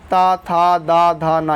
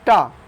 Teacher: ता, था, दा, धा, ना, ये दंत है। लेकिन इसी में एक है ऑप्शन नंबर डी टा, जो कि मूर्धन्य है ना कि दंत